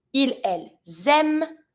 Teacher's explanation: I link with my S, but I don't pronounce the ENT.